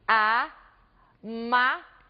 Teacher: Vejam vocês que em amável nós temos aqui a sílaba tônica ma.